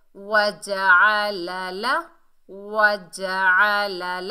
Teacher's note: आइन को हलक के दरमियान से अदा करना है